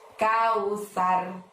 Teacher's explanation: karena huruf tsa maka ujung lidahmu Dorong ke gigi atas